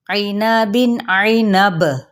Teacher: با پہ قلقلہ ہو جائے گا کیونکہ با ساکن ہونے پر قلقلہ کیا جاتا ہے، اور جیسا کہ آپ لوگ جانتے ہیں کہ قلقلہ 5 حروف پر کیا جاتا ہے: قاف، تا، با، جیم اور دال۔